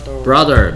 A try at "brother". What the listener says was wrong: TH 무시하지 마세요. 혀를 살짝 물고 내는 소리.